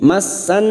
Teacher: nun yang bertasdid gunna musaddada kita dengungkan selama 3 harakat.